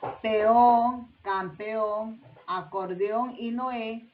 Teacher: peón, campeón, acordeón y Noé tienen la mayor fuerza de voz en la última sílaba